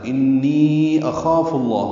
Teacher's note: انی دوبارہ آیا ہے، اس پہ مد ہے کیونکہ یا مدہ کے بعد آگے حمزہ آ رہا ہے، تو انی اخاف اللہ، خا پر پڑھیں گے، الف مدہ بھی پر پڑھیں گے